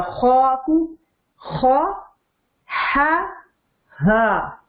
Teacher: جو نقطے والا خوا ہے وہ نکلتا ہے ادنا حلق سے